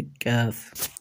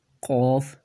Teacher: کیف کا مخرج ہے قوف کے مخرج کے بالکل قریب، یعنی تھوڑا سا منہ کی طرف کا جو حصہ ہے وہاں سے حرف کیف ادا ہوگا۔ یعنی ان دونوں میں فرق یہ ہے کہ ایک ہوتا ہے قوف، ایک ہے کیف۔